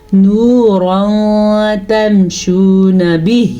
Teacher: نون ساکن یا تنوین کے بعد والا حرف حروف اخفاء میں سے آ جائے تو نون ساکن یا تنوین کی آواز کو چھپانے کے ساتھ ساتھ غنے کے ساتھ پڑھتے ہیں.